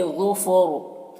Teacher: ظفر میں را کو پر پڑھیں گے، یہ حروف مستعلیہ میں سے ہے، اور یہاں پر وقف کریں گے تو را کی جو دو زیر کی تنوین سکون سے بدل جائے گا، تو پھر را کو پر پڑھیں گے اس طرح سے۔